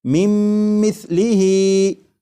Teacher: تو یہاں پر یہ جو من ہے اس کا جو نون ساکن ہے، جب نون ساکن کو میم میں ادغام کریں گے تو نون ساکن کی آواز پھر نہیں آئے گی، بلکہ میم کے بعد میم کی آواز آئے گی، اور یہاں پر غنہ بھی کریں گے اور اسے پڑھیں گے مم مثلیہ۔